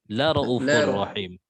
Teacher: La raufur rahim. Tanpa ada waw mad.